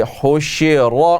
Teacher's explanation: را کو ابھی سے فل ماؤتھ سے پڑھیں چونکہ را کے اوپر زبر ہے تو را کو موٹا کر کے پڑھیں گے